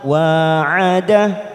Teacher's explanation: wa fathah diikuti alif dua harokat